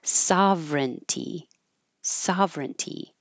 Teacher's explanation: this word with all of these vowels and all of these syllables really just gets pushed into three syllables